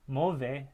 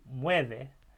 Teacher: You're changing that vowel into a diphthong in this case in Spanish. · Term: stem changing